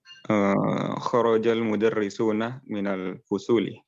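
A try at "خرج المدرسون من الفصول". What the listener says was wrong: Ahsan.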